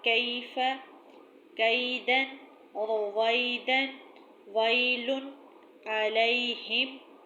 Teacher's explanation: یا ساکن سے پہلے زبر ہو تو ہم نے یا کو نرمی سے ادا کرنا ہے